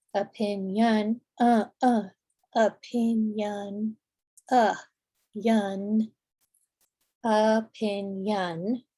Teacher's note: that first O in opinion is a schwa. Opinion, opinion, yun, opinion.